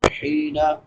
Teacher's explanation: حین یا مدہ ہے حا کے بعد، یعنی یا ساکن ما قبل کسرہ یعنی زیر ہے، اس کو ایک الف برابر لمبا کر کے پڑھیں گے. نون کے اوپر زبر ہے، زبر زیر پیش لمبی نہیں ہوتی.